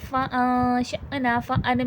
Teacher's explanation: اب دیکھیں فأنشأنا، فأن میں اخفا ہو رہا ہے، نون ساکن ہے، نون ساکن میں اخفا ہوگا یعنی کہ نون کی آواز چھپے گی. ش میں دیکھیں حمزہ پہ جزم ہے، تھوڑا سا جھٹکا آئے گا، نا پہ الف مدہ ہے، تھوڑا کھینچ کے پڑھا جائے گا.